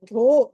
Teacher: ధ అన్నది మహాప్రాణం ఒత్తి పలకాలి